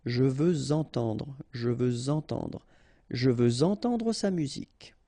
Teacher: Even if we've got this X at the end, well, with the liaison it will sound like Z.